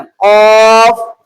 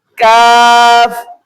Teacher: قاف کو موٹا کر کے، کاف کو باریک کر کے، مخرج دونوں کا قریب قریب ہے۔